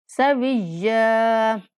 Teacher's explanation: یا پر بھی وقف کرتے ہوئے ایک الف کے برابر لمبا کر کے وقف کریں گے